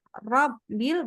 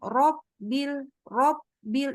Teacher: Padahal semestinya bukan membulatkan bibir, melainkan menaikkan pangkal lidah.